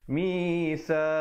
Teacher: kita sempurnakan saja bunyi mim matinya tanpa dipanjangkan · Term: izhar syafawi